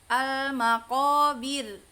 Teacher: Intinya kalau dia rnya mati ya sesudah kasrah maka tipis dibacanya rnya ya.